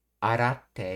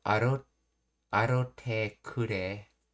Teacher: Well, arate is how you normally say it, but this is Kansai band, so they not only didn't do the double T sound, but they changed the ra to a ro.